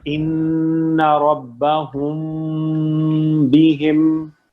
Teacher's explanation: اخفاء میں ہلکے سے ٹچ کر کے میم کی ساؤنڈ جیسی آئے آگے با آئے, ناک میں آواز کو لے جائیں, چھپائیں ناک میں آواز کو